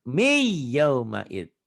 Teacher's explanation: Kayak ini nun mati ketemu ya tuh. Jadi bunyi nun matinya hilang. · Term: idgham bi gunnah